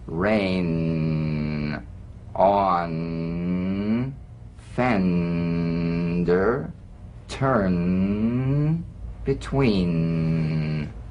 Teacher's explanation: the N is a nasal consonant made with the tongue blade to the upper gum Ridge it's most resonant and it's well forward placed it's a melodic